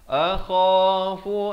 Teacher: Kha di hujung kerongkong